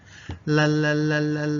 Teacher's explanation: the tip of the tongue touches the gum Ridge behind the teeth well actually it can touch the teeth it's no problem so